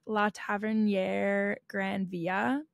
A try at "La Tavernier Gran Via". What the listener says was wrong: That was pretty good. Sounded a little French instead of Spanish, but...